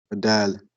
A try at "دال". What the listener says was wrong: say dal. So don't say dal. That's English. Da. This is Arabic. Dal. Try to move your front tongue to the front, behind your top teeth.